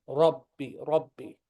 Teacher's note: ra with the fatha is heavy.